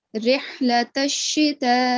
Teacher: Join the ta straight to the sheen. · we will prolong the letter ta for a minimum of 4 seconds. Okay, don't pronounce the alif separately.